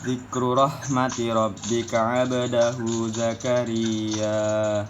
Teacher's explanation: pada kata 'abdahu terdapat hukum qalqalah sugro karena ada basukun